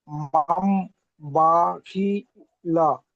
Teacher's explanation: নুন সাকিনের পরে বা এসছে তাই নুন সাকিনকে মিমের দ্বারা পরিবর্তন করেছে